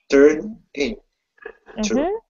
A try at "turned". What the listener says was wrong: Okay, so I want you to work on emphasizing that final d sound. Turned.